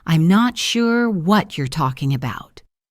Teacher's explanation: talking about links together with the g in talking being soft.